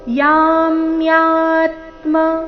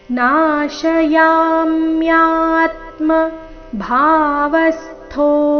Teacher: ಮೂರನೇ ಚರಣ ನೋಡೋಣ ನಾಶಯಾಮ್ಯಾತ್ಮ ಭಾವಸ್ತೋ ನಾಶ ಯಾಮ್ಯಾತ್ಮ ಯಾಮ್ಯಾತ್ಮ ಆಘಾತಗಳ ಮೇಲೆ ಗಮನ ಯಾಮ್ಯಾ ಎರಡು ದೀರ್ಘ ದೀರ್ಘ ಬಂದು ನಂತರ ಆಘಾತ ಬಂದಿದೆ ಅದೇ ಅಕ್ಷರಗಳ ಮೇಲೆ ನಾಶಯಾಮ್ಯಾತ್ಮ ಭಾವಸ್ತೋ ಭಾ ಮಹಾಪ್ರಾಣ ದೀರ್ಘ ಇಲ್ಲಿ ಭಾವ ಬೇಡ